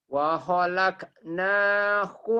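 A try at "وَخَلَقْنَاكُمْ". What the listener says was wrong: Qalqalah bukan hamas. Wa khalaq. Wa khalaq. Wa khalaq. Bukan pecah, itu mah hamas. Wa khalaq. Wa khalaq.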